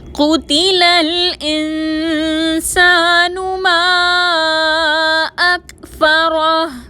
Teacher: ما اکفرہ میں مد ہے، 4 حرکت کے برابر کھینچ کر پڑھیں گے · الانسان میں نون ساکن میں اخفا کریں گے